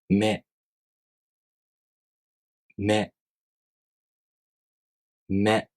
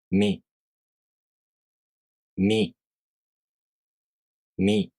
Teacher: With み, you close your lips and you make the tongue position of the [i] vowel. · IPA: [mʲ]